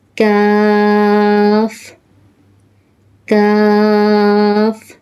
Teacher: Pronounced from the roots of the tongue and the hard plate.